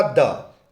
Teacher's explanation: ऐसा वर्ण है जो स्पर्श भी है, दंत भी है, सघोष भी है और अल्प प्राण भी है